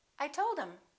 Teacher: instead of saying I told him we just dropped the H